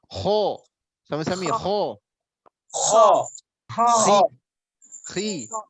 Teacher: Ini sifat rokhwah nanti. Sementara kho itu punya sifat ngorok. Kasar dia.